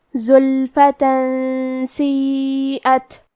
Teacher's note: پھر حرف السین ہے کلمت سیئت، یہاں حکم ہے اخفاء، لہذا ہم یہ حکم کو غنہ کے ساتھ ادا کریں گے